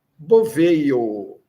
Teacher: esse J tem um som de I breve. De pai, é o I de pai, bem suave, bem fraquinho.